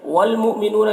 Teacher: یہاں پر حمزہ ساکنہ ہے جھٹکا لگے گا